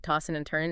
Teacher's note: Tossing and turning, you often drop the G sound, right? Tossing and turning, and the D and N might blend. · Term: G dropping